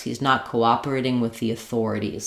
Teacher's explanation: The main stress in this whole overall sentence is on the Thor of authorities.